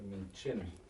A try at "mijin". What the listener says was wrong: Mi jin. Yeah, mi jin. So always if it's by itself, it's jin, j. Or if it comes behind the H, ch.